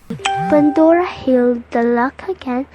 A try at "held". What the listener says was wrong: Held was read as healed.